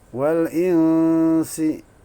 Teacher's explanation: Wal insi, ikhfa hakiki, ya. Apa sebab nun sukun bertemu sin? Nun sukun dibaca samar, ikhfa itu artinya samar, ya. Insi, ya, tidak jelas.